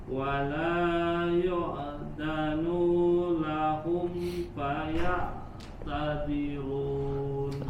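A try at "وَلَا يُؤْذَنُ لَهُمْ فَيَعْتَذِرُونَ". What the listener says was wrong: Huruf nu-nya tidak panjang. Jangan wala yu'dhanu lahum, nu-nya pendek, langsung bersambung wala yu'dhanu lahum.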